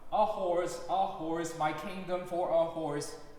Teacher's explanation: Also notice how we speed up when we get to kingdom for a horse. It's almost like a group of 16 notes there.